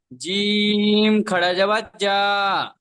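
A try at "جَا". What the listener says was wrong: আচ্ছা, একটা জিনিস লক্ষ্য করবেন, জিম যেরকম তিন আলিফের মতো টেনেছেন, আপনার হার খটা যেটা এক আলিফ টান দেওয়ার কথা ছিল সেম সেম হয়ে যাচ্ছে, অক্ষরের টানটা।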